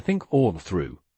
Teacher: the unvoiced th has no vibration